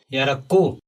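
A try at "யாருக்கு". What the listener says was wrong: यार बताया आपने, यहाँ पर ऊ आना चाहिए, रू। यारको, यारको, वो बिल्कुल सही है।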